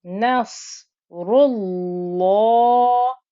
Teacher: You can hear the lam thick and heavy. As soon as you get to the lam, make it thick and heavy.